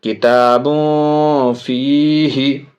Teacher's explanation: تو با میں تنوین، اس کے بعد فا حرف اخفا، ناک آواز میں، آواز کو ناک میں لے جا کر کے پڑھیں گے.